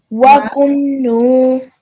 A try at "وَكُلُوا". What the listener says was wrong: Remember not to join when you don't, there's no shadda or a sukoon above this one, so try not to join those letters. وَكُلُوا.